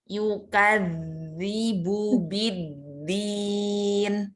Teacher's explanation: Za itu lidahnya ya ujung lidah menyentuh gigi seri atas